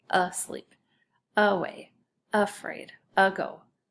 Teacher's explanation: This type of A is called a schwa A, and it sounds like a short U